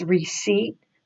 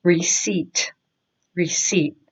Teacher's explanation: The P is silent and you go straight to the T. So it's receipt, receipt.